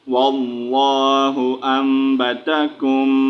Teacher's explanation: یہاں پر نون نہیں پڑھیں گے، ٹھیک ہے، نون کو یہاں پر ہم نے میوٹ کر دینا ہے، ٹھیک ہے. یہاں پر ہم نے چھوٹی میم کو پڑھنا ہے